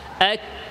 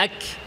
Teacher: অনেকে সিদ্ধা ছাড়াই সরাসরি হামসে চলে যায়, এক, এভাবে করা যাবে না। প্রথমে সিদ্ধা, আওয়াজ বন্ধ, এক।